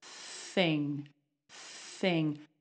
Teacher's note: No voice, there's no buzz in my throat. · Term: unvoiced TH